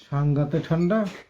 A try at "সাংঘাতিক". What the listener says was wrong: সাংঘাতে না ঠান্ডা, সাংঘাতিক।